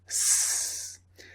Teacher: So the S sound is unvoiced because there's no vibration.